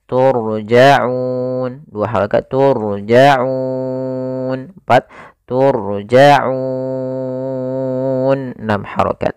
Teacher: Di sini adalah huruf nun yang dimatikan dan disukunkan. Sebelumnya ada huruf mad, maka au-nya ini kita boleh panjangkan 2 harokat, 4 harokat atau 6 harokat. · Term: mad arid lis sukun